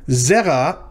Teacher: notice it's two syllables the first one of them is accented